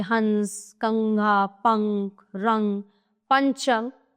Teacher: अनुस्वार इसका चिन्ह शिरोरेखा के ऊपर बिंदु के रूप में लगाया जाता है। इसका उच्चारण करते समय हवा नाक से बाहर निकलती है।